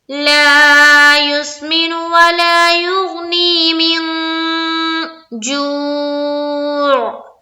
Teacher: ये जीम हुरूफ इख्फा में से है, तो अब यहाँ पर हमने करना है इख्फा। इख्फा के माना है छुपाना। किस चीज को? नून की आवाज को। कहाँ छुपाएंगे? नाक में।